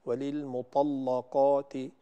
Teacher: وللمطلقات، طبعا أنت تقرأين لورش فهو يفخم اللام، فينبغي أن تفخم الطاء واللام والقاف. وللمطلقات، فهذه تحتاج أن ترفعي مرتبة التفخيم فيها قليلا.